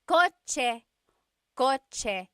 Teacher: The ch sound is a TS combination.